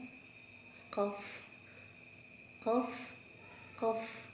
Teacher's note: Kita mulai dari pangkal lidah. Pangkal lidah ada huruf qaf. Dinaikkan pangkal lidahnya.